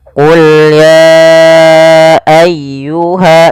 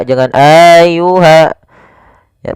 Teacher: Maka apabila ada kata ya ayyuha, biasanya kita sebut dengan bacaan mad jaiz munfasil yang kita panjangkan sepanjang 4 harokat. Kemudian pada lafal ayyuhal kafirun ditekan ya-nya.